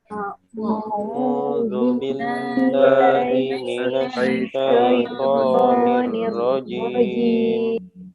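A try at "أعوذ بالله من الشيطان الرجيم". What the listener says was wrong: Ya, nir tebalkan bukan nirroji, tapi nirrojim. A'udzu billahi minasy syaithanir rajim.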